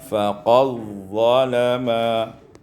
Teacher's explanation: diidghamkan dal pada dha sehingga dibaca faqad zalama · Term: idghamud dal fi dha